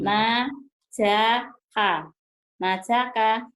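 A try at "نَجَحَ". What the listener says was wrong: Tadi gue nanya kan najaha, kenapa jadi najaka? tadi ibu ngejanya najaha, kenapa jadi najaka ya?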